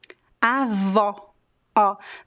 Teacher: when you say grandma, we use the open O. Avó, ó. This O sound, the open O, is very similar to the expression in English that we have when you see something cute.